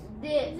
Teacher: this is going to be a voiced th sound